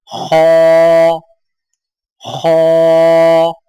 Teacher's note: زبان کی جڑ کو تالو کی طرف بلند کرتے ہوئے موٹی آواز میں پڑھیں